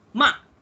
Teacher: kalau bunyi yang keempat dia akan turun. Dia akan jadi macam tegas sikit. Okay. Sebab dia akan going down.